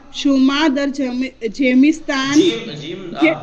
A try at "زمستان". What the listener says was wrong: گجراتی ہیں جیم نہیں ہے زمستان.